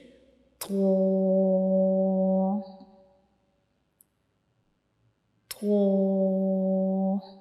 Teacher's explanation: کہ ہم تو کو کیسے پڑھتے ہیں کہ ہماری زبان کی نوک کا اوپر والا حصہ جو ہے یہ ہمارے اوپر والے سامنے والے جو دو دانت ہوتے ہیں ان کے اندر والی سائڈ پہ جو مسوڑے ہوتے ہیں ان کو ٹچ کرے گا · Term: تو کا مخرج